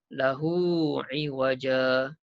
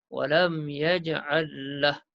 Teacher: kalau kita baca sambung, hukumnya ialah mat silah qasirah. Panjang 2 harakat.